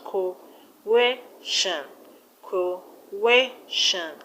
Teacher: The word coercion has three syllables: coercion, coercion. So the stress will be on air. That's where you have the stress.